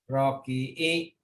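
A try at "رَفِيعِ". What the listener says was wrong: Rafi'i. Bukan ki ya Pak. Mm-mm. Rafi'i.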